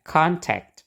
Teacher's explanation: ini suku kata yang pertama ya yang ada O-nya itu yang diberi tekanan